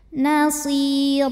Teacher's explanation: Huruf ra dibunyikan secara tafkhim sebab berbaris tanwin fathah, maka dibacanya tebal. Nasira. Ra jika berhenti di sini hukumnya adalah mad iwad sebab ada baris tanwin fathah yang kita berhentikan atau kita wakafkan.